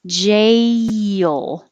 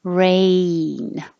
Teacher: you're starting in the middle position your tongue is kind of in the middle your jaw is pretty high but then you rise to e a so the word jail once your tongue goes very high